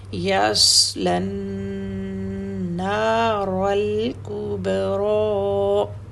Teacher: وَيَتَجَنَّبُهَا الْأَشْقَى، الذي یس صاد ہے نا، اس کی سیٹی، یسلن، لام بھی آپ کو ریڈ نظر آ رہا ہے کیونکہ لام نے آگے نون سے ملنا ہے نا، اس لیے لام کو بھی ساتھ ملا دیا کیونکہ یہ نون سے ملنا ہے سوری، اور پھر ہم نے نون کو دو حرکت کا ٹائم دینا ہے، غنہ کرنا ہے، اس لیے ریڈ کلر ہے تاکہ ہمیں کلیئر ہو جائے کہ ریڈ لیٹر پہ میں نے غنہ کا ٹائم دینا ہے۔